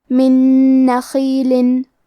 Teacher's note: جنات من، کلمت من کے آخری میں نون ساکن ہے، پھر حرف النون ہے کلمت نخیل، نون حروف الادغام بغنہ میں سے ہے تو ہم یہ حکم کو غنہ اور تشدید کے ساتھ ادا کریں گے۔ من نخیل، کلمت نخیل میں حرف الخاء ہے تو ہمیں خاء کو موٹی آواز میں پڑھنا ہے۔